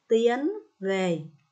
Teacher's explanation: vần yên có âm đôi i e và âm n cuối